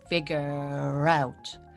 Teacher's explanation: with the vowel so this r comes back so we have to pronounce this r at the end to link it with out